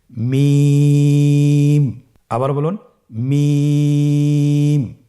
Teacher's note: মিম হরফটি উচ্চারণের ক্ষেত্রে অবশ্যই বারিক হবে, পাতলা হবে এবং 3 আলিফ টেনে উচ্চারণ করতে হবে।